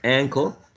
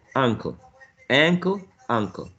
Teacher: the only difference is initial sound right we have a trap here ankle and we have a wedge here uncle